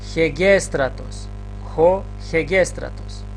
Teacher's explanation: Имаме хо, ета, гама, епсилон, сигма, тау, ро, алфа, тау, омикрон, сигма. Но бидејќи на етата имаме спиритус аспер, пред етата читаме едно Х, значи хегестратос.